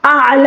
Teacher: عین کو حلق کے درمیانی حصے سے ادا کریں گے اور لام کے اوپر جو کھڑا صبر ہے اس میں وقف کے دوران کوئی تبدیلی نہیں ہوگی.